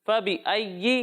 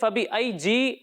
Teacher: تو یہاں تشدید خوب ظاہر ہونی چاہیے، ٹھیک ہے، بہت سارے بچے ایسے فبی ای پڑھتے ہیں، فبی ای آلائی، یہ اس طریقے سے نہیں ہے، ٹھیک ہے، یا کی تشدید خوب ظاہر ہونی چاہیے